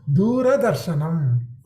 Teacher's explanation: There is an akara, r plus a. So you have to pronounce the a.